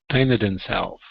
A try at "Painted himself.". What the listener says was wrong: Now make sure to hit that M. Okay. Instead of hitting an N sound, it's an Painted himself.